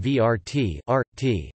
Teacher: the syllabic r in the Serbo-Croatian word vrt, rt, garden. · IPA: [ʋr̩̂t]